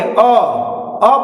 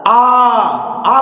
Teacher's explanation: अ बोलते वक्त कम समय लग रहा है। आ बोलते समय अधिक समय लग रहा है।